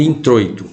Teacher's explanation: o O é o forte, é a vogal, e o I é o mais fraco, é a semivogal. Então aqui você tem um ditongo decrescente, uma vogal forte e uma semivogal fraca.